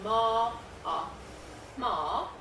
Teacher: ma requires you just blow air quite strongly through your nose it often requires you to have a paper tissue handy as